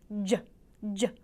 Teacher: I think of that as an affricate. What you have is some kind of friction going on, and then all of a sudden there's a puff of air. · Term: affricates